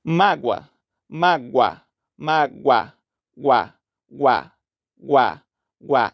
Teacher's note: temos o o e o a na mesma sílaba em que o o é semivogal e o a é vogal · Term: ditongo crescente